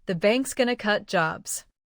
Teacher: Notice how is going to reduces to going to. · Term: linking